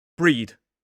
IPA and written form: briːd (breed)